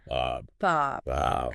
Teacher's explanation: You don't want to just say a quick bab. You want to emphasize that long a sound.